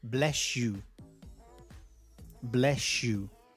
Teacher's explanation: The s and the y have changed. They have merged. They have assimilated into a sh. So remember, if a word finishes with a s sound and the following word begins with a y sound, when they're read together, they come out as sh. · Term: assimilation